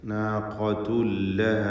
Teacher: നാഖത്തുൻ എന്നതിലെ നാഖത്തുൻ എന്നതിലെ തൻവീനിനെ ശേഷമുള്ള ലാമിൽ പൂർണ്ണമായും ലയിപ്പിച്ച് നാഖത്തുല്ലഹ എന്ന് ഇദ്ഗാം ബിഗൈരി ഗുന്ന നൽകിക്കൊണ്ട് ശദ്ദുള്ള ലാമിനെ മാത്രം ഉച്ചരിക്കണം. തൻവീനിൻ്റെ ശബ്ദം അല്പം പോലും ഉണ്ടാവുകയില്ല.